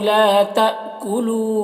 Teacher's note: لا میں الف مدہ ہے اور تا میں یہاں پر حمزہ ساکنہ ہے، جھٹکا لگے گا